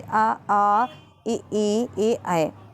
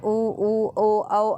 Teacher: ई में मुंह एकदम से साइड मतलब हो जा रहा है और उ में एकदम मुंह गोल हो जा रहा है